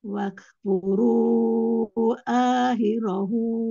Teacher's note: Hu pada kata akhirahu punya dua harokat mad silah.